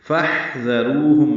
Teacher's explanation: فاحذروہم میں حا ساکن پہ ہمس ہے، فا کو حا سے ملانا ہے.